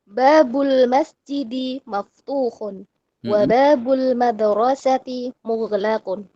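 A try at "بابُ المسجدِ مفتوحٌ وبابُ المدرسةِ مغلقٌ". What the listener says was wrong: Betul, sahih. Barakallahu fiik.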